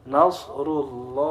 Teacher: ketika tafkhim lafadz Allah itu bersuara o